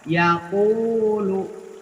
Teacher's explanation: Ya dibuka, u dimonyongkan, lu juga dimonyongkan, ya.